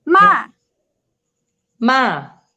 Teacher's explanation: start high and go down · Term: falling